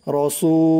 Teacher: সু 1 আলিফ টান দিতে হবে, রসু। অনেকে বলে রাসু বলে, রাসু বলা যাবে না, উচ্চারণ করতে হবে র, রসু।